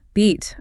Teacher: with beat, my mouth actually widens into a slight smile and the sound physically takes longer to leave my mouth. >> That widening, that stretching of time, that is the glide.